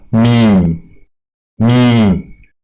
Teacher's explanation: quand vous allez prononcer ça, la voix doit descendre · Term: le son bas